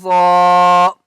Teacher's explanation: ضاد کو موٹا کر کے پڑھیں گے اور ضاد کو 5 الف کی مقدار کھینچ کر پڑھیں گے